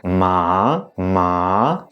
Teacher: the fourth tone is actually the one that is going down · the third tone that is going down and up